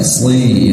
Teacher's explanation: Diangkat lidahnya ke langit-langit sehingga terdengar tebal